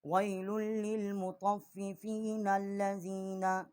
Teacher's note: اگر اسے ہم ملا کر نہ پڑھتے تو پھر وَيْلٌ لِّلْمُطَفِّفِينَ اس کو ہم ایسے پڑھتے، کیونکہ ہم نے اس کو ملا کر پڑھا ہے وَيْلٌ لِّلْمُطَفِّفِينَ الَّذِينَ، اور نون کو ہم نے لام کے ساتھ ملا کر پڑھا ہے